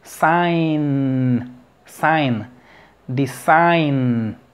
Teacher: después de decir ay no puedes pronunciar por sí sola la n como que te posicionas en la g